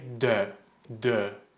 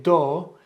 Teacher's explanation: The first one is they don't pronounce this letter correctly. They say O. They say do instead of dö.